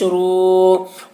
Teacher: واو ساکن سے پہلے پیش ہے، واو مدہ ہوا، اس لیے واو مدہ کو ایک الف کے برابر کھینچ کر پڑھیں گے۔